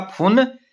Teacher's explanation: छत्तीसगढ़ी में अल्पप्राण ध्वनियों के स्थान पर महाप्राण ध्वनियां मिलती है